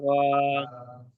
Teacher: আলিফ মাদ্দাকে এক আলিফ পরিমাণ টান দিয়ে পড়তে হবে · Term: খাড়া জবর